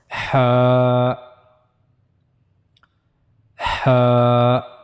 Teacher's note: for Ha, we have to use the middle of the throat. As you can see here, we have to read it from the middle part of the throat.